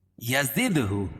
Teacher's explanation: دال پر قلقلہ، کیونکہ دال حروف قلقلہ کے 5 حرفوں میں سے ہے اور ان پر جزم ہے.